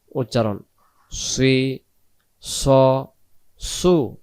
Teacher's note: সদ অক্ষর মুখটা গোল করে মোটা করে আমরা আদায় করব। সজ্জের সি, সদ জবর স, সদ পেশ সু উচ্চারণ সি স সু।